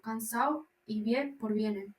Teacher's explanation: seseo, pronunciar Z y C como S, y ceceo, pronunciar S como Z, pérdida de la D y N intervocálicas.